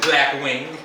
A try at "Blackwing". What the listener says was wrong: Don't put so much emphasis on my name.